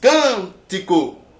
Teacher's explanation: onde é que está a sílaba forte está nessa primeira sílaba